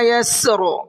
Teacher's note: یسر سین اور را دونوں کو ساکن کر کے پڑھیں گے